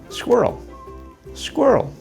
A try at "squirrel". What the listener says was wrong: Your R is so strong and powerful that it replaces the vowel sounds. It sounds like squirrel.